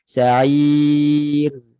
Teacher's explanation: Biar bunyi ra tu jelas ada bunyi ra. Dan nipis. Dan dia ada tawassuk. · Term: ra nipis